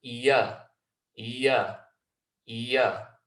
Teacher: middle of the tongue there's no pressure on the roof of the mouth but the back of the tongue drops down